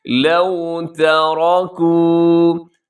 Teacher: تا باریک، را اس کے اندر پر ہے، اور باقی حرف جو ہے کاف اور واو وہ بھی باریک ہوں گے